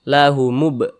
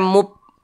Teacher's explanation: Jangan dibaca mub, jangan, tapi dipantulkan lahumub, mantul seperti itu. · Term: qalqalah sughra